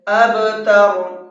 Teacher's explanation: با کے اندر قلقلہ کریں گے، اس لیے کہ با کے اوپر جزم ہے